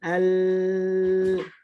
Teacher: Ketika kita sukunkan al, maka ya ada suara yang memanjang. Ya ada suara yang memanjang dan suara tersebut berasal dari pinggir-pinggir lidah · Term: inhiraf